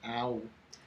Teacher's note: the brown cow starts with the A as the wide A, and ends as a W